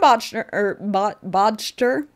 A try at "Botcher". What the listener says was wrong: Botcher. The D is silent. Because there's no way it's not silent. Botcher?